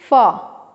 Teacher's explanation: लेबियोडेंटल मतलब lip and teeth दोनों को यूज करते हैं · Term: लेबियोडेंटल साउंड